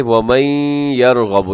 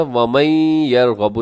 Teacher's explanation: یہاں پہ آپ ادغام کریں گے، اور ادغام جو ہے یہاں پر غنّے کے ساتھ ہوگا۔